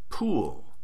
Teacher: To pronounce pool in English, the correct alophone of P is aspirated. The aspirated alophone has a brief puff of air.